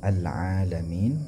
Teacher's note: Kemudian al-alamin, alaminnya panjang 2 harakat